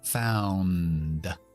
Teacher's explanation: Grupo consonántico al final de found, ND. Importante pronunciar las dos cosas.